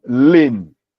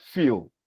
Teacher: in pronouncing that word you realize that the L is very clear but in a word like feel the sound is not very clear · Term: dark L